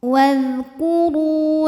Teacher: Ru matobi'i dhahiri karena ada waw sukun didahului baris dhammah, maka dibacanya panjang 2 harokat